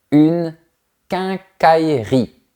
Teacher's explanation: Remarque que la lettre E a complètement disparu.